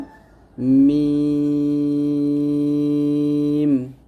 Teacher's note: দুই ঠোঁটের শুকনো অংশ মিল করে আমরা উচ্চারণ করব